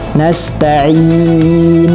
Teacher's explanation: ketika membaca nasta'in belum sampai ke nunnya, jangan ke khayshum dulu, karena dia makhrajnya adalah mat al-jawf.